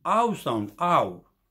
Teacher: Since this is an open vowel, a glide to ow would necessitate a large movement. Usually in English, the glide towards ow begins but is not completed, the end of the diphthong being somewhere between close mid and open mid in tongue height.